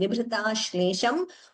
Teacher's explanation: Note the Drittam. The sh is doubling